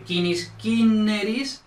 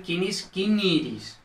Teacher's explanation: Entonces, una R en contacto por el final suele abrir una I breve en E breve, básicamente. Una I breve más R, es decir, la secuencia I breve R evoluciona a E breve R.